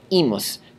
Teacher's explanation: the long I here, although it is hard, I don't hold it for a space of two counts like you are supposed to do with all long vowels. So I just say imus, not imus.